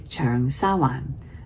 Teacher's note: the Wan is that low falling 4th Wan